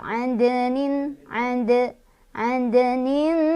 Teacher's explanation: Sukunnya sukun asli, bukan karena berhenti ya. Jadi dibacanya pantulannya kecil, ngalir. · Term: qalqalah sughra